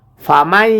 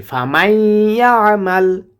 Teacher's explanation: এখানে গুণনা করব কারণ নুন সাকিনের পরে ইদগামের হরফ ইয়া এসেছে